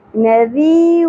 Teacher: ذال نرمی سے ادا ہوگا اور یا ساکن حرف مدہ ہے ایک الف کے برابر کھینچنا ہے · تنوین کے بعد حروف یمنو میں سے میم آ گیا, ادغام مع الغنہ ہوگا, را پر پڑی جائے گی.